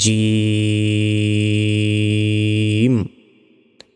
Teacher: জি হবার মধ্যভাগ তার বরাবর উপরে তালুর সঙ্গে লাগিয়ে জিম অক্ষরটি উচ্চারণ করতে হবে